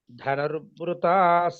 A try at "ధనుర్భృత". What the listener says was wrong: దీర్ఘం లేదు ధనుర్వృత దీర్ఘం లేదు